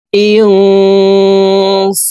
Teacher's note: বলা হয় নুন সাকিনের পরে ইকফার হরফ সিন আসছে এই কারণে এই নুন সাকিন কে নাকের ভিতরে লুকাইয়া গুন্নার সহিত পড়বো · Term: ইকফাহ গুন্নাহ